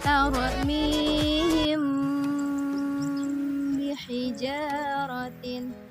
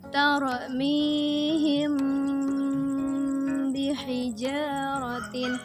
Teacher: Adapun cara bacanya ialah dengan menyamarkan bunyi mim, kemudian mendengungkan sebanyak 2-3 harokat.